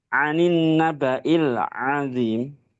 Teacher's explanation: makhrajnya ain ya, tempat keluarnya huruf itu tengah-tengah tenggorokan ya, ditenggorokan bagian tengah